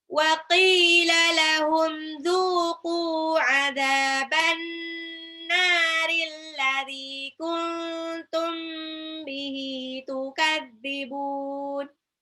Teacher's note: Tukadzibun, bun di belakang mat arid li sukun, bisa dibaca 2 sampai 6 harokat.